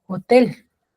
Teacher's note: está la mayor fuerza de voz en la última sílaba